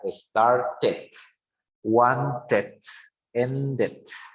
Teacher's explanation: Study, incluso study, como que termina con D, bueno, antes hay una otra consonante Y, pero esto termina, ¿no? Entonces, D or T, we have an extra syllable at the end